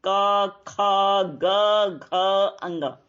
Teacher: का वर्ग के जितने भी अक्षर हैं, क, ख, ग, घ, अंग, तो इन सब का उच्चारण स्थान कौन सा है? कंठ यानी गला